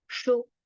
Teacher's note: Sh with short u vowel sound. So quickly we have to stop there.